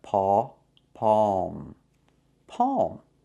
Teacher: When you see ALM, it's a special pronunciation. It's not the long O like no and go. It's the sound aw like saw and law.